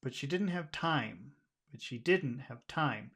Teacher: I just naturally want to just emphasize the word time